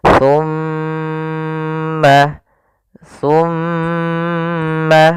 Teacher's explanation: Pada bacaan thumma, di sini ada bacaan gunnah, yaitu ditandai dengan adanya huruf mim yang berharokat tasydid dan diwarnai dengan warna hijau. Cara membacanya yaitu suara mimnya ditahan dulu. Jangan langsung dilepas